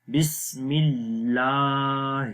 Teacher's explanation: یہاں لام کے اوپر کھڑی زبر ہے اس کو لمبا کریں گے